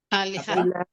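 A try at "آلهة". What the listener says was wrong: Panjang A-nya, alihah.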